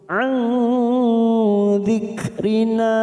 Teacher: ikhfa hakiki, kita samarkan 3 ketuk